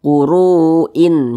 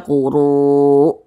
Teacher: Huruf yang kita matikannya adalah huruf hamzah. Jadi kalau kita berwaqaf tepat di huruf hamzah, maka huruf hamzah itu kita matikan. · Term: mad arid lis sukun